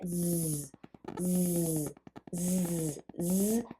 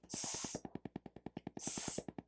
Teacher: So we have z, which is voiced, and its pair is s, s, voiceless.